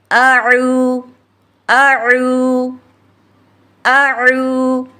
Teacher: عو میں عین کو کیسے ادا کریں گے؟ زبان کی جڑ کو حلق کی طرف یعنی گلے کی طرف مضبوطی سے دباتے ہوئے باریک اور ڈگڑ کھاتی آواز میں پڑھیں گے، تاکہ ہم حمزہ اور عین دونوں میں فرق کر سکیں۔